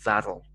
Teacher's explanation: the hard t sound becomes a softer d sound